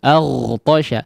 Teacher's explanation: Adapun ghain aliran suaranya yang dikeraskan, aghtasha, jangan dimatikan ya, ya, jangan dimatikan.